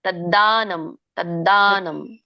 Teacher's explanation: ಮಹಾಪ್ರಾಣ ಇಲ್ಲ ಅಲ್ಲಿ ತದ್ದಾನಂ